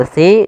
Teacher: ada lafal SII di sini ada mad thi'i mad thai'i yaitu adanya kasrah bertemu dengan huruf ya maka kita panjangkan lafal SII dua harakat hati-hati dalam melafalkan huruf SII karena di sini jangan dibaca kasiro